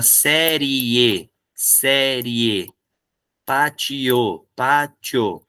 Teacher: Então é o caso de vogal e semivogal, que a gente chama isso de ditongo crescente. Tem a semivogal e depois a vogal.